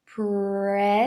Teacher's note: arredonda os lábios para esse R, tá bom? A língua vai lá para trás pro R.